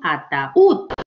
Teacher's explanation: la mayor fuerza de voz está en ud, ataúd. Sube la mayor fuerza de voz, entonces automáticamente la separo y la tildo.